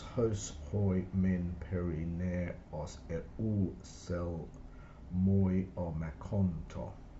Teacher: Just notice in here we've got a diaeresis, which means that the epsilon upsilon, which would normally be one syllable, has been broken into two. That's for the sake of meter.